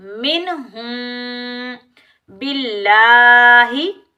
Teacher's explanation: लफ्ज़ अल्लाह से पहले वाले वर्ड पर ज़ेर आने की वजह से लफ्ज़ अल्लाह को हम बारीक पढ़ेंगे।